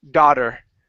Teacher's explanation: It's not an ow sound, it's only an ah.